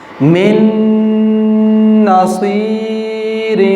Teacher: زبان تالو کے ساتھ لگے گی کیونکہ آگے نون پر شد آ گئی ہے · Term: ادغام